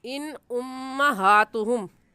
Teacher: इन के नून साकिन पर गुन्ना नहीं करेंगे क्योंकि नून साकिन के बाद हुरूफ हल्की में से हमज़ा आ गया है